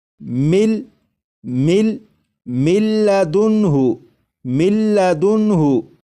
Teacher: یہاں پر جب ادغام کریں گے تو غنہ بھی نہیں کریں گے